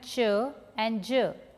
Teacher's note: in the affricates there is a complete closure and then there is a sudden release of the air